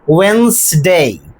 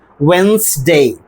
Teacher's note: in order to get the correct pronunciation of this word we have to drop the consonant d. Not only that we have to drop another vowel and that is e.